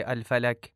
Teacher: الفلق کے آخر میں جو قاف کا لفظ ہے اسے باریک پڑھا جاتا ہے